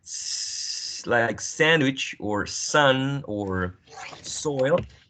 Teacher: alveolar because whenever you say slag sandwich or Sun or soil the tip of the tongue is touching the alveolar Ridge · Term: alveolar fricative